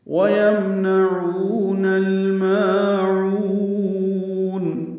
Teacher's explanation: واو ہونٹ کی نا تمام گلائی سے ادا ہوگی